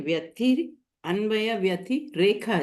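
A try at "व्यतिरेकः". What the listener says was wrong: Vyati Rekaha. Not Rekha, but Rekaha. Alpa Prana.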